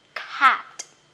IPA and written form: cæt (cat)